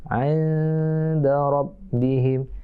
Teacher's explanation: Nun mati ketemu da. Ikhfa. Samar-samar berdengung.